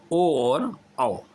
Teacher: इनको जो बोला जाता है वो कंठ और ओठों की सहायता से इनको उच्चारित किया जाता है, इसलिए इसको कंठोष्ठ बोला गया है।